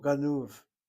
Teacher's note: The accent is on the second syllable